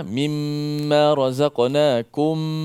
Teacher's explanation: Mim mati bertemu dengan mim, maka hukum dia idgham, idgham mislain ataupun idgham syafawi yang kita baca dengan dengung juga.